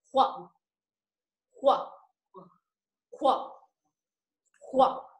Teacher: chúng ta đọc là khuẩn, nhưng chúng ta cho ra hơi, ra luồng hơi ạ